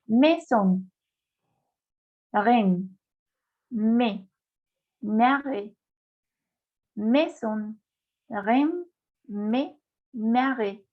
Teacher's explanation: Cuando tenemos I, A, es toujours ouvert. Cuando tenemos la unión de estas dos vocales, de este par de vocales, A, I, E, I, siempre tendremos una E abierta.